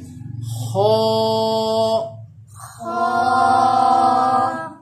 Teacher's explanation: اور یہ حرف ہا کی جگہ سے تھوڑا سا اوپر کی طرف، یعنی جو گلے کا کنارہ ہے اوپر کی سائڈ، یہاں سے حرف یہ خو ادا ہوتا ہے۔ اس کو پر یعنی کہ موٹا پڑھا جاتا ہے، اور اس کو پڑھتے وقت اپنے ہونٹوں کی جو شکل ہے وہ بیضوی شکل، جو انڈے کی شکل ہوتی ہے ویسی بنانی پڑتی ہے۔ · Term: حرف خو